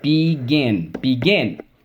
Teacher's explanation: the double consonant you double me all right in those cases because the accents on the second syllable